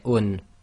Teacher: So let's do a recap on this. So dhammatain is actually the oo sound with the noon sound added to it